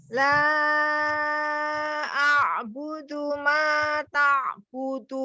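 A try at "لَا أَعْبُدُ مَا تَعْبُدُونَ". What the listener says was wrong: Nah, hilang stabilnya di akhirnya. Budu ma dal ya, bukan tu. Budu. La a'budu ma ta'budun. Dal hurufnya.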